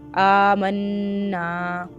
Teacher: کے اوپر مد ہے، اس کو لمبا کریں گے، قالو آمنا، نون کے اوپر کیا ہے تشدید، غنہ بھی کریں، ناک میں آواز لے کے جائیں گے